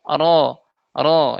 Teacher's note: Jadi ditekannya itu sedikit ke langit-langit mulut ke atas. Jadi routnya terbuka biasa tidak perlu maju. Ro ro yang membuat dia tebal yaitu karena pangkal lidahnya.